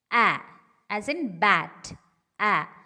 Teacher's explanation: The next one is A as in bat, A, unrounded, front, open